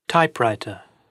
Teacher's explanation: First element nominal, stress on first element.